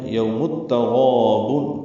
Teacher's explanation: تا باریک ہے، ادغام شمسی ہو رہا ہے، میم کو تا سے ملاتے ہو